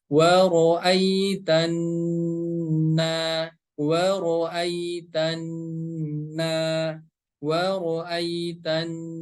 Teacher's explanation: Huruf nun yang bertasydid, maka cara membacanya harus digunakan dua harokat, didengungkan dua harokat.